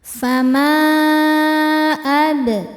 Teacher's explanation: Fama ad ba sukun hukumnya qalqalah sugro karena ba sukunnya asli dan ada di tengah-tengah bacaan. Cara bacanya memantul dengan pantulan yang kecil.